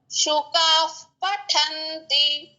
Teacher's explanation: ముందు ఉన్న విసర్గ పట్టి ఎఫ్ సౌండ్ రావాలి